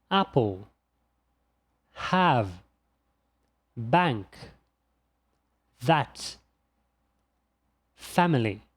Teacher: Percebeu como o A é bem aberto?